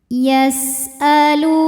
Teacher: Lu hukumnya adalah mad thabi'i dzahiri. Karena ada wawu sukun yang sebelumnya didahului dhommah. Maka huruf lam panjang dua harakat.